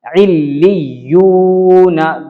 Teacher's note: لام پہ تشدید ہے، لام کو 2 مرتبہ پڑھیں گے. عل، ایک مرتبہ لام بول دیا، لی، پھر دوبارہ لام بولا میں نے، عل لی.